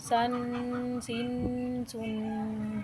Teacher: جب اس کے اوپر رک کر پڑھتے ہیں تو آپ کو خود ہی محسوس ہو رہا ہے کہ آپ کی آواز ناک میں جا رہی ہے۔ تو اسی آواز کو جو ناک میں جاتی ہے غنہ کو بولتے ہیں۔